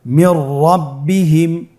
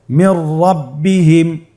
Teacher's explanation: নুন সাকিনের পরে যদি র হরফ আসে তাহলে নুন সাকিনকে পরবর্তী হরফের সাথে মিলিয়ে গুন্না ছাড়া পড়তে হবে। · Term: ইদগামে বিলা গুন্না